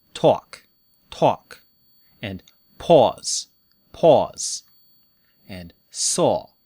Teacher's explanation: On the east coast of the United States and in the UK, they say aw.